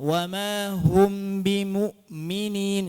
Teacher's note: antara mim dan ba ini kalau kita baca izhar maka jangan ada apa sifat gunnah tambahan pada mim